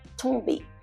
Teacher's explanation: In French, when you pronounce T, your tongue rests against the upper front teeth. As opposed to in English, your tongue stays behind your teeth.